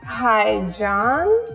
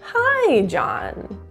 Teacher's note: statement we want to show a downward intonation at the end it's a falling intonation it just means that we're singing to a low pitch